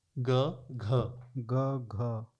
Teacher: ग में वायु इतनी नहीं है, घ में अधिक है। आप ग बोलें घ बोलें, हाथ रखें, ग घ ग घ, घ में आपको थोड़ी गर्म वायु निकलेगी, आपको निकली है ना।